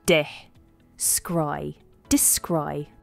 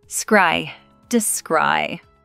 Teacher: The stress is on the second syllable. Scry, descry.